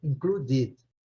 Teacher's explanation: A sílaba forte está na segunda